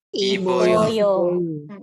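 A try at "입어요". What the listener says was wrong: Iboyo. Bukan iboyo, jadi tidak dipisah ya, iboyo.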